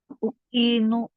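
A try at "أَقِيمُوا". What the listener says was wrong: Uqimu uqimu pakai qaf sahih pakai qaf uqimu pakai qaf bil qaf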